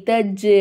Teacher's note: கல்கலாவுடைய சட்டத்தை ஃபாலோ பண்ணனும் தஜ் அப்படின்னு சொல்லிட்டு ஜீமை அசத்தி ஓதணும்